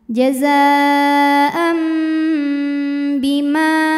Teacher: Jadi bukan jazaan tapi jazaam m ya. Disertai dengung, jadi ditahan.